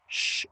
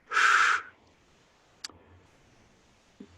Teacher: an SH sound that is pronounced deeper in the back of one's mouth as opposed to right behind one's teeth. So a regular SH sound is sh, and the accent mark over the SH sound is sh.